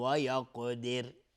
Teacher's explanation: اگر توقف بکنیم و یقدر را ترقیق میشه چون را رو ساکن میکنیم و قبل از را کسره هست